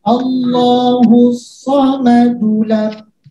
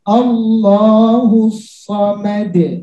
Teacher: Jadi kita boleh berhenti atau mau lanjut. Maka kalau kita lanjutkan Allahus samadulam dulam, nggak ada pantulan lagi. Allahus samadulam, beda dia.